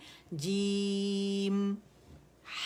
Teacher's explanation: जीम की आवाज़ जो है ना मद में, उसमें गुन्ने की आवाज़ नहीं आनी चाहिए